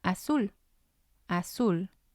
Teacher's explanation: again it has two syllables and we're going to stress the last one